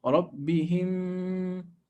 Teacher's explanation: Close your lips. Merge those two memes, the first and the second, together into one. ربهم. Count two harakat and go to the next sound, the noon, and apply إخفاء.